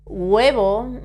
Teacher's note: when we pronounce this word the H is never pronounced in Spanish · sometimes we pronounce a very, very, very soft G in front of the U. Huevo, it's very soft.